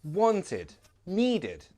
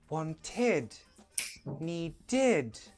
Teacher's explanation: And it's a very weak id. It's never stressed.